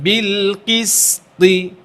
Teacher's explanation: ত মোটা, ত ইতবাকের হবে, এটা সর্ব অবস্থা মোটা থাকবে, কখনই পাতলা করা যাবে না।